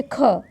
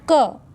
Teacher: ख को बोले में ऊष्म वायु बाहर आ रही है ना, ऊष्म वायु थोड़ी सी बाहर आएगी, हवा बाहर आएगी। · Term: महाप्राण